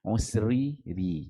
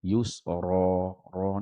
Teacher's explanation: Inna ma'al usri ri nipis. Yusra ra ni tebal.